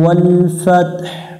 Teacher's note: যদি শুধু ওয়াল ফাত বলি তাহলে হা অক্ষরটা উচ্চারণ হবে না।